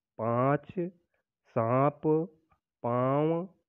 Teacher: इसके उच्चारण में हवा नाक और मुंह दोनों से निकलती है